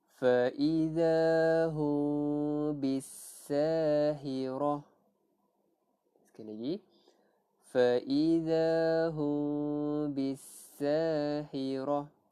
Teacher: kita tidak merapatkan bibir. Kita tak baca fa iza hum, tak rapat bibir. Kita renggangkan sedikit bibir. Ada angin, boleh ada angin lalu. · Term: ikhfa syafawi